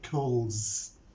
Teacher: the verb cool ends with the voiced sound le. So when we add s, we pronounce it, we say cools